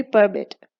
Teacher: परमिट में the last syllable is stressed